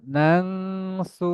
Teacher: নুন জবরে নান হওয়ার কথা ছিল কিন্তু নাং হবে কারণ এই নুন সাকিনের পরে সিন ইকফাকুনার অক্ষর চলে আসছে তাহলে নুন সাকিনে যে পড়ার আসলটা যে কায়দাটা নুনের পরিবর্তে আমি